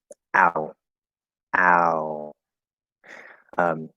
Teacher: Yeah, so the ow diphthong, ow, ow. So it's the starting position is very, very close to ah